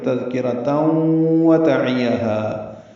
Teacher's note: رکنا ہو تو تذکرہ یہ ہا میں تبدیل ہو جاتی ہے، ہم نے ملا دیا. تذکرۃ ادغام کیا، ادغام ناقص غنہ ہوگا. وتعیہ یہ جلدی پڑھنا ہے، ہا الف مدہ ہے اور اس کے بعد حمزہ آنے کی وجہ سے دوسرے کلمے میں مد منفصل بنی ہے.